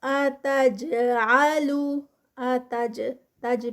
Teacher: تج پہ جو ہے وہ جیم کا قلقلہ، کتب جد کا لیٹر اور وہ بھی سٹاپ پہ جزم کے ساتھ